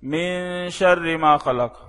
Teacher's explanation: اس نون، اس غنے پہ تھوڑا سا ہلکا ہاتھ رکھا کریں، زیادہ زور نہ دیا کریں